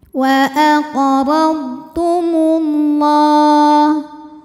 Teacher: karena lam berbaris fathah panjang, maka huruf lam panjang 2 harokat.